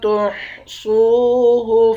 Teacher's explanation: واو کے ساتھ ملا کر ایک الف کے مقدار کھینچ کر پڑھیں گے